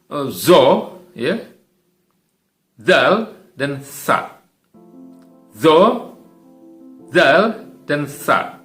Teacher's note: ada sedikit dari ujung lidah kita yang keluar di antara sela-sela gigi, ya, atas dan gigi bawah.